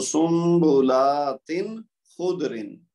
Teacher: تو سنبلاتن یہ جو تنوین ہے اس کی آواز ظاہر کریں گے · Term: اظہار حلقی